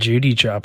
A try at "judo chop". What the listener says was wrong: Also, it's judo, not Judy. It is not Judy.